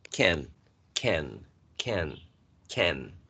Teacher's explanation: when you say can, basically it's the tongue going to touch the alveolar ridge, right? Can, and the lips are sort of spread.